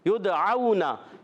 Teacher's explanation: یدعونا یا کو دال سے ملانا ہے، یا ادا ہوتا ہے وسط زمان وسط تعلق سے، اور دال ساکن ہے قلقلہ ہوگا، آواز لوٹ کر آئے گی. یدعونا واو ساکن سے پہلے زبر، واو لین ہوگا، نرمی سے ادا